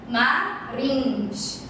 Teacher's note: Marins, que aqui é um I nasalizado